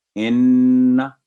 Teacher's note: اس جگہ نون کی فتح کو بھی لمبا پڑھنا غلط ہوگا، یعنی کوئی جو حرکت اگر اس کے اوپر ہے فتح کا ضمہ، جو عام 3 حرکات ہیں، وہ کوئی بھی لمبی نہیں ہوگی جب تک کوئی آواز لمبے کرنے والی حرکت نہ ہو۔